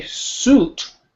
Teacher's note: suit is very forceful we're trying to push through as much air as we can through that tiny space